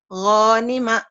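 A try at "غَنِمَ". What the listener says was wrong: Gak ada yang panjang.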